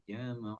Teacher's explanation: gara-gara di depannya ini huruf tebal, sinnya ikut tebal, sehingga seolah-olah terbaca seperti huruf sod. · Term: sin jadi sod